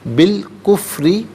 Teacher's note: کفری میں را کے نیچے زیر ہے، را کو باریک کر کے پڑھیں گے